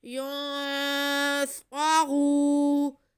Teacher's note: آگے را پہ پیش اور واو ساکن ہے تو یہ واو مدہ ہو گیا، را کو ہم کھینچ لیں گے. ینصرو، را پہ پیش ہے اس لیے ہم را کو پر پڑھیں گے.